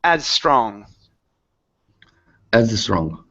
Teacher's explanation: when you have an S and an S together, okay, only pronounce one S.